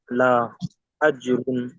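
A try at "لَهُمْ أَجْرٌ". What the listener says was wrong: হুম, লা টান দেবেন না, দেখেন লা জবর, লাম জবর লা, লা লামের উপরে জবর এসছে, জবরটি হলো হারাকাত, ঠিক আছে? হারাকাতে পড়াকে কেমন ভাবে পড়তে হয়? তাড়াতাড়ি পড়তে হয়, তাহলে তাড়াতাড়ি পড়েন। লাহুম আজরুন।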